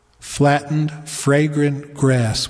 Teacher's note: the repetition of f's g's and r's flattened fragrant grass with two little bumps of two syllables each followed by one little bump of just one syllable